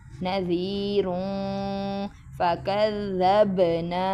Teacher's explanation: نذیروں، ادھر نون ساکن، نون تنوین کے بعد فا ہے تو اخفا کریں گے